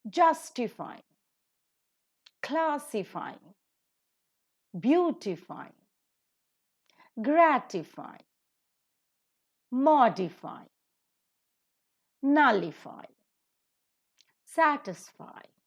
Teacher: These are the polysyllabic words ending with IFY, and according to the rule, the stress is taken up at the antepenultimate syllable.